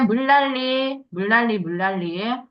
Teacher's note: 리을 니은이 만나서 리을로 바뀌어. 자, 근데이 리을 니은 순서는 순서가 바뀌어서 니은 리을이 돼도 상관이 없어.